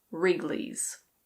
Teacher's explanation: The W is completely silent, so just ignore that.